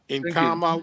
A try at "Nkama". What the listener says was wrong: You don't read N. Sorry, you don't read N. N is there for your nasal. Kama. That's why you say Kama. You don't say Kama. You say Kama because of N. You don't read N.